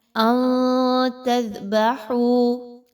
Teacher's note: یہاں پہ آپ نے نون کی آواز کو کلیئر نہیں پڑھنا، چھپانا ہے اور اخفا کرنا ہے